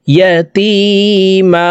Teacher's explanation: তানন ওয়ালা মিমটি নাকের ভিতরে লুকাইয়া গুন্নার সহিত পড়ব